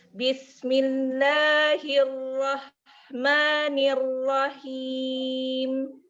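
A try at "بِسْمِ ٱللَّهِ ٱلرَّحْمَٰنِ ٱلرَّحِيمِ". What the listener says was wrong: Nah, latihan rok tebal ya, PR ya. Agak tebal sudah, agak tebal. Tapi karena kita tadi udah agak tebal yang ro gini. Sudah agak tebal, cuman kurang tebal. Karena saya itu mengikuti guru saya menggunakan madhab syami. Jadi madhab syami itu tafhimnya 5. Ketebalannya lebih 5 daripada madhab misri. Ya, lebih tebal gitu maksudnya.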